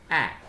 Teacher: Okay, when we think about the position of the lips, A, the lips are a little bit spread. Okay, mouth is to some extent widened. Hence, this sound will be termed as front unrounded vowel just below half open positions